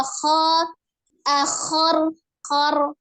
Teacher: Ya, kho itu termasuk huruf yang tebal. Tapi cara menebalkan bunyi huruf kho adalah tidak dengan memajukan kedua bibir, tetapi dengan mengangkat pangkal lidah. Apalagi ketika dia fathah, mulutnya harus dibuka kho, akhor, khor, nah gitu.